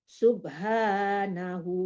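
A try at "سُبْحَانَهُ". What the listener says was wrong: subhanah udah berhenti, nggak perlu diulang lagi, langsung aja huwal ghani.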